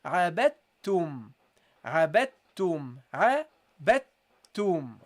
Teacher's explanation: So you don't pronounce the dal. You go immediately to the ta. · the second ta you connect it with the meme, because the meme is non-voweled. And the non-voweled letters, we know that we have to connect it with the voweled letters before.